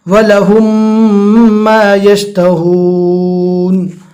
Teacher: یہاں پر ادغام شفوی ہوگا، میم ساکن کے بعد جب میم آوے تو میم میں گنہ کرنا ہے